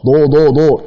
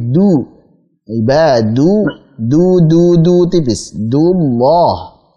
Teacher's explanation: Dipanjangkan du-nya dulu supaya terjaga ketipisannya